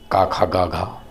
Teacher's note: कंठव्य अर्थात कंठ से बोले जाने वाले